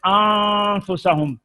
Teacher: نون کو ناک میں چھپا کر غنے کے ساتھ پڑھنا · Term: اخفاء